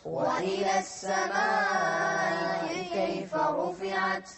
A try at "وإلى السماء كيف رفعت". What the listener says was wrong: مدوا أكثر 4 حركات.